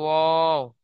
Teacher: দুই ঠোঁট না মিলিয়ে মাঝখান হতে উচ্চারিত হয়